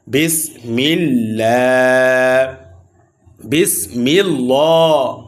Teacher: এই আল্লাহ শব্দের লাম বারিক হবে অর্থাৎ পাতলা হবে কেন পাতলা হবে কারণ এই আল্লাহ শব্দের লামের পূর্বে জের আসছে আল্লাহ শব্দের লামের পূর্বে জের আসলে আল্লাহ শব্দের লামকে বারিক অর্থাৎ পাতলা করে পড়তে বিসমিল্লাহ। · লামকে মোটা করে পড়া যাবে না। লামকে বারিক করে অর্থাৎ পাতলা করে পড়তে হবে। বিসমিল্লাহ হর মোটা হবে।